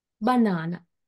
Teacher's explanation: the primary stress is on the syllable na, second syllable